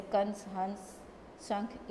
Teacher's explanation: अनुस्वार यानी बिंदु का उच्चारण नाक से होता है। इसे बोलते समय हवा केवल नाक से निकलती है।